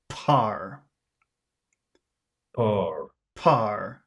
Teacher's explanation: I wish I could hear more air. I want to hear an explosion of air.